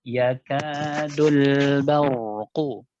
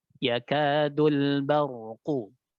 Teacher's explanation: Huruf ra itu harus ngalir sedikit ya. Ada sifat tawassut di huruf ra.